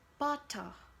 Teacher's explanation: the T isn't really pronounced at all